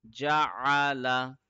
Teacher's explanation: It is a deep letter, so ayn will be read from the middle throat.